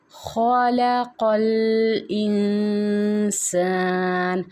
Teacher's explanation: علم القرآن، خلق الانسان، خا کو حلق کے پہلے حصے سے پڑھا جائے گا، اور قاف کو ہم نے زبان کی جڑ نرم تالو کے ساتھ لگانی ہے قاف کو پڑھتے ہوئے